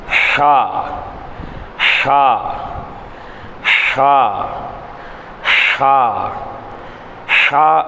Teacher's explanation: அடுத்து ஷா ஷா ஷா ஷா ஷா அப்படிங்கிறது நம்மளுடைய தொண்டையினுடைய நடுப்பாகத்தில் காற்றை வெளிப்படுத்தி உச்சரிப்பது